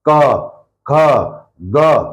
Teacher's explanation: क ख ग कहां से आवाज निकल रही है सीधी गले से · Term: कंठ व्य